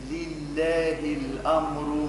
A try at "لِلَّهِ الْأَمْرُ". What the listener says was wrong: ما هيش الأمر، شو عمل في الهمزة؟ فخمها. لله الأمر، الأمر، الأمر.